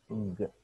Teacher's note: सो आप एक और तरीकाकार ये है कि आप बिल्कुल अपने गले के ऊपर हाथ रख लेंगे और वो साउंड को प्रोड्यूस करेंगे. अगर आपको वाइब्रेशन फील हुई हैं तो ये वॉइस्ड है, अगर नहीं हुई तो फिर वॉइसलेस.